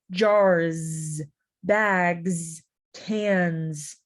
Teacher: The S. So sometimes the S, even though it's an S, we pronounce it like it's a Z. Jars, bags, cans.